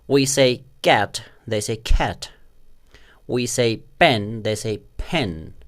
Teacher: sound or a sound or a sound what native speakers do they pronounce these three sounds in the beginning of syllables as if there is an h an invisible h that is not written in the spelling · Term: aspiration